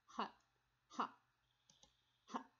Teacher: Ha, ha, ha, no vibration, unvoiced